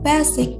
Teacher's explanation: indonesian tend to stress the a in the word boldly just like the full ah